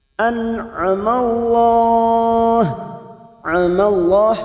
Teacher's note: nun sukun bertemu Ain Idhar halq dibaca jelas tanpa mendengung